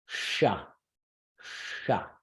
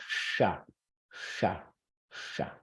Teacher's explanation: And then this guy is the sh sound made in a retroflex position. · The sh is, and this is more than you need to know, but it's a sibilant, so it's a hissy sound. So your tongue is hovering, it's not touching. So you put your tongue in that retroflex spot, and then just take it a little ways away and go sh, sh, sh.